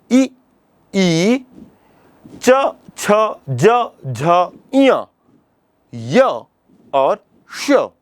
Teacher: इ ई च छ ज झ ञ य और श इतने वर्णों का उच्चारण स्थान तालु है। इसलिए इन वर्णों को तालव्य वर्ण कहते हैं।